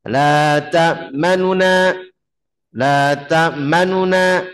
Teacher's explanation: Nah, kalau ikhtilas itu bacanya kurang lebih sepertiga harokat. Baca dengan cepat sepertiga harokat.